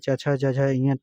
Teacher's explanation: च छ ज झ ञ तालु होता है।